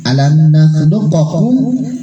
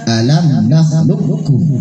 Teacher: Masukkan huruf qaf ke huruf kedua yaitu kaf. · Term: idgham mutaqaribain